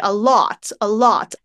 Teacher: Sometimes I find myself going a little bit more of the /ɔ/ in thought, and I say a lot, a lot.